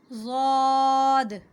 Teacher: زبان کی کروٹ جب اوپر کے مسوڑوں سے ٹکرائے